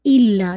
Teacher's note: बहुत से लोग इला पढ़ देते हैं, नहीं, इल्ला, ठीक है, हिट ट्वाइस कीजिए। इल्ला, ला को 2 काउंट, अलिफ मत दिया, मा, अगेन 2 काउंट।